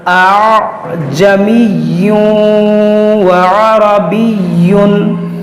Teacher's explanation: یہاں پر تسہیل کیا، یعنی اس حمزہ کو بھی ہم نے نرمی سے پڑھا